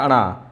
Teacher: पंचम वर्ण है और पंचम वर्ण अनुनासिक होता है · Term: अनुनासिक व्यंजन